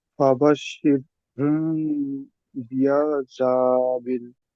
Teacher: মিম সাকিনের পরে যদি বা আসে, তাহলে মিম সাকিনকে একালিফ গুণনা করে পড়তে হবে, একে ইকফায়ে সাফাবি বলে।